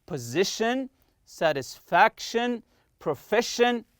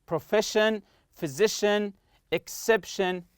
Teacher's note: Always stress the next to last syllable. Not the last syllable, no, the one before it.